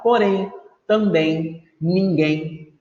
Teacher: Em porém, a sílaba tônica é a última. Também a sílaba tônica é a última.